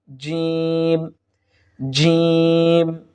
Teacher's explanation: আমরা সা হরফটি পেয়ে যাব ইনশাল্লাহ সা এরপরে জিম জিম অর্থাৎ জি হুব্বার মধ্যখান তার বরাবর উপরে তালুর সঙ্গে লাগিয়ে দিলেই আমরা জিম হরফটি পেয়ে যাব